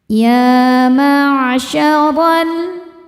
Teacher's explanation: Huruf ro dibaca secara tafkhim karena ro berharakat fathah. Cara membacanya ditebalkan dengan cara mengangkat pangkal lidah kita.